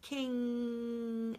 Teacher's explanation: the tongue is going up in the back it's touching the soft palate and it's actually sealing off any entry of air into the vocal cavity so the air is being redirected up through the nasal cavity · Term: nasal sound